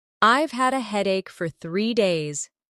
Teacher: Stress headache and 3 days.